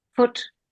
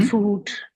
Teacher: they want to say foot but they say food. >> Mhm. >> So, they make the the vowel too long.